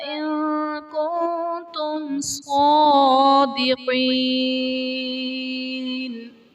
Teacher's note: ان کنتم میں نون ساکن کے بعد حروف اخفاء میں سے کاف ہے، یہاں پر اخفاء کا قاعدہ ہوگا